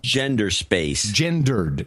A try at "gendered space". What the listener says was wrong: Gendered space. No, it's gendered with ED at the end.